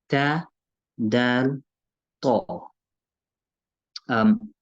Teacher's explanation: Tip of the tongue touches the gums of the upper two front teeth. If you start rolling your tongue further back, you'll end up saying dal, dal.